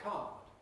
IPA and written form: kɑːd (card)